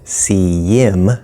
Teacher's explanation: him is being reduced to just im. The H is disappearing. We also have a connection, see yim, yim sounds sort of like a small little y or a y sound, see yim.